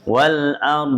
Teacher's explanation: jadi bentuknya di makhraj d bukan di makhraj ro